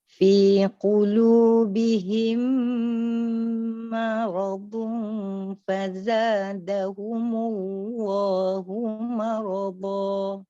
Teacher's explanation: Ya, fokus pada mim, dan mim itu keadaan lidahnya merendah, baru pergi huruf ra dalam keadaan tebal. Lidahnya tafkhimnya meninggi di situ.